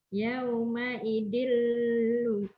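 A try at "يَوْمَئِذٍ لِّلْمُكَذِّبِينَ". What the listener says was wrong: Ketinggalan lil. Yauma idil lil. Yaum yauma idil lil mukadzibin.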